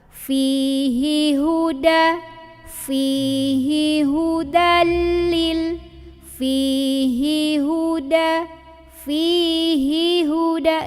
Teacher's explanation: Ini hati-hati, pindah kalimat, hi tetap pendek. 1 harokat.